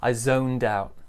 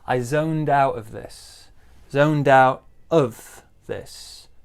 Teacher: the d joins the ow sound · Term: linking